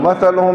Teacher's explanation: مثلہم میں تھا پر سیٹی نہیں ہوگی, ہا سینے سے نکلے گا